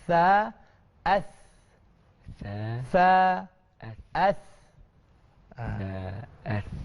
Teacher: Jadi yang ini berkaitan dengan mana lidah kita ni terjelang sikit keluar dia di hujung gigi depan kita ni, ya. Sa, kita tak boleh belakang. Sa dia akan jadi sin. Jadi depan sikit. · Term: huruf sa